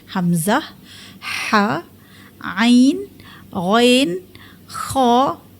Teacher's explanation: Sebab semua huruf tu keenam-enam huruf itu keluarnya daripada halqi. >> Iaitu halkum, kerongkong. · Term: izhar halqi